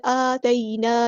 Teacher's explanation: آتیناہم الکتاب، یا علی نہیں تو نرمی سے موڑیں گے، آتینا، ٹھیک ہے، آتینا نہیں، حرکات مد آئی ہے، اور لمبا کریں گے ایک الف کے برابر، آتینا، نون کو بھی لمبا کریں گے ایک الف کے برابر، مد اصلی ہوگی